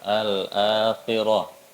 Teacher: A-nya itu panjang 2 harokat